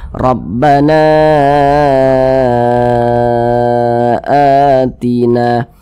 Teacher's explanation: mad badal itu panjangnya sama dengan mad thi'i dua harakat